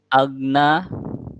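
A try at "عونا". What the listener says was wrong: auna. Pokoknya lebih dijelaskan. Auna. Yang agna itu huruf G di bahasa kita. Auna. Jangan makhwah. Kalau agna syiddah gue-nya. Makhwah. Auna kayak ghairil maghdubi al-maghdub, jangan agna atau maghdub. Auna. Ya lebih dialirkan lagi. Auna.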